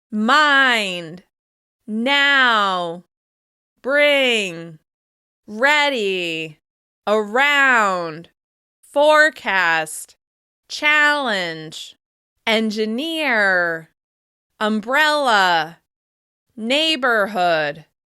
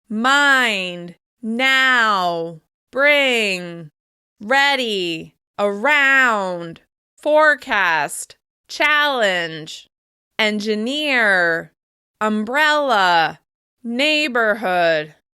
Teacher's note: Could you hear how one syllable of each word stood out more than the rest? The stressed syllable was longer, louder, and higher in pitch, with extra clear mouth movement, even on those one syllable words. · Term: word stress